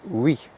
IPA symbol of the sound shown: w